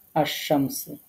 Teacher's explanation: লাম তারপরে শিন তারপরে মিম তারপরে সিন তো আমরা আসমস পড়ছি এখানে লামটাকে আমরা পড়ছি না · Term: হরফে শামসী